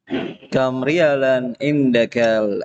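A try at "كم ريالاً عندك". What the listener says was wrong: Ya-nya panjang. Kam riyalan indakal ana ya ammaru.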